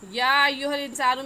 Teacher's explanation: تو حروف مدہ کے بعد حمزہ دوسرے لفظ میں ہے، دوسرے کلمے میں ہے، اس وجہ سے اس مد کا نام ہوگا مد منفصل اور مد جائز. اور اس مد کو 3 الف کے برابر کھینچ کر پڑھیں گے، نہ اس سے کم اور نہ ہی اس سے زیادہ